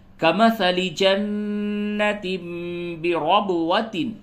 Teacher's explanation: تنوین کے بعد جب با آیا ہے اس جگہ پہ قلب ہوگا۔ قلب کی علامت کے طور پہ یہ چھوٹی سی میم لکھی ہوئی ہے۔ · نون مشدد ہے، یہاں پہ غنہ ہوگا، اور تنوین کے بعد جب با آیا ہے اس جگہ پہ قلب ہوگا۔